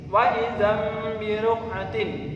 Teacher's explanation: membacanya idgham buna waidam biruk'atin waidam birukatin bacaan iqlab bacanya tanwin dimasukkan ke huruf ba diganti dengan suaranya mim